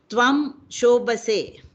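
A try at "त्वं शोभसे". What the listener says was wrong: Is this ba? Is it ba or bha? Bha. No. Papa ba bha.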